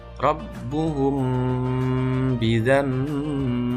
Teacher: Mim sukun bertemu dengan ba, maka dibaca samar disertai dengung. Berhubung mim dan ba ini makhrajnya sama, yaitu di kedua bibir atau syafatain, maka dengungnya mim dan ba ini sama, yaitu suara huruf M. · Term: ikhfa syafawi